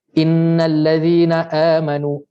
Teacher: Contoh kita baca mad badal 2 harakat